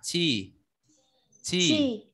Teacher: Quy dùng chữ chờ nhưng bật hơi ra đọc là chi.